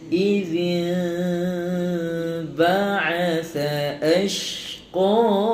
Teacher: Iklab ni satu hukum yang mana sebutan dia tu dia tidak merapatkan serapat-rapatnya bibir, dia ringankan sebutan. Ada sikit ruang, macam boleh masukkan kertas selai tu boleh masuk.